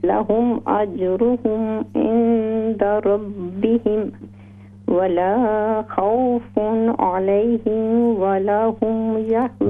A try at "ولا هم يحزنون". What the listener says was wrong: ولا لام الف زبر لا، اس کو لمبا کیجئے. ولا هم يحزنون. ولا خوف عليهم ولا هم يحزنون.